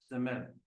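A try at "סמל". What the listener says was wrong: semel, yeah, So you're putting the emphasis on the M. I don't know if you're noticing. Semel, semel, semel. There's actually no emphasis here in this word.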